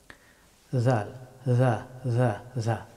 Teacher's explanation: জাল হরফটি উচ্চারিত হয় জিহ্বার অগ্রভাগ এবং সামনের দুই দাঁতের অগ্রভাগ।